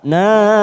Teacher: Nah, mat wajib mutasil, ada mat yang bertemu dengan hamzah dalam satu kalimat, kita panjangkan antara 4 atau 5 harokat